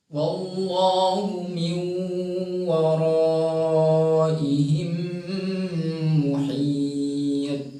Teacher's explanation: maka pantulkan ke vokal O atau vokal A yang mengarah ke O, karena itu huruf tebal